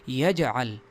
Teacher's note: جیم میں قلقلہ ہوگا، یجعل اس کو پڑھا جائے گا.